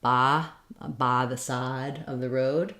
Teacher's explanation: some regional dialects of English, in the South in particular, they tend to say an ah sound for this diphthong I, like ba the side of the road.